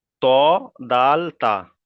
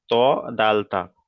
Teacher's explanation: জিভের আগা এবং সামনের উপরের দুই দাঁতের গলার সাথে লাগিয়ে উচ্চারিত হয়।